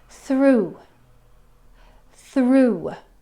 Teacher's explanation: It's an oo sound at the end with a little w sound at the very, very end of that word.